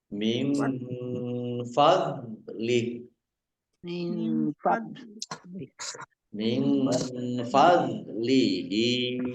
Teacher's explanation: Dok sukun bukan kolkolah, jangan dipantulkan.